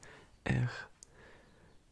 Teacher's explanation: And so, as an English speaker, if you've never learned French as a kid, then it's quite hard, I think, to replicate that R that we have, which is kind of like really from the back of the throat, like R, which is, it's actually a little hard to explain how to make that sound.